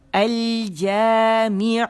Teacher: अल जामिउ, होंठ मुकम्मल गोल होंगे